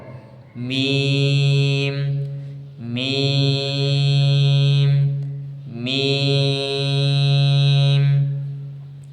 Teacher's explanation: উভয় ঠোঁট মিলিয়ে ঠোঁটের শুকনো জায়গা হইতে মিম